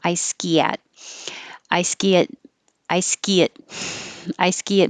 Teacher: i ski at is going to connect from the e to the a